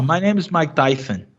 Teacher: o som de S do Mike Tyson é um som de TH